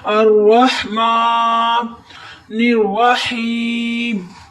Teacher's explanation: हाँ की हलक से आवाज निकालते हुए याए मद्दा पर आपने थोड़ी देर ठहर कर गुन्ना करना है